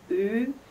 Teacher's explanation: some regions will also lengthen their u sound to ooh